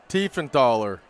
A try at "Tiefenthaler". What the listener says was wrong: You got it, but I think you said Thaler. It's Taller.